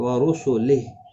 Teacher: اور وقف کی صورت میں ہا ساکن پڑھا جائے گا